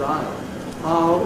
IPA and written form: aɪ.l (I'll)